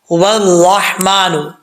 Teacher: یہ دیکھیں یہ واؤ کے اوپر زبر ہے. واؤ کے بعد جب یہ را سے ملائیں گے تو بیچ میں یہ جو الف اور لام ہے یہ گر جائے گا